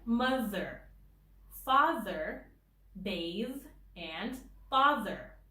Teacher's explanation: When the TH comes in the middle of the word, it is voiced